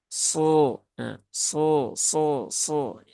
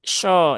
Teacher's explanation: Ketika diucapkan huruf sod itu pangkal lidahnya naik.